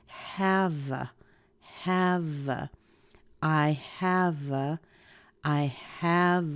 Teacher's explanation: is our main verb so we want to say it clearly push the V and have over into the a